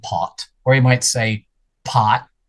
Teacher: the T is not released. There's no puff of air. There's no release at all. There's no vowel after it.